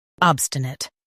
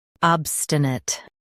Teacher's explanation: US starts with ab. UK starts with ob. Keep stun it the same.